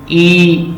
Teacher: आप ई कहेंगे तो आपको ऐसे अपने लिप्स लगेंगे जैसे मैं स्माइल कर रही हूँ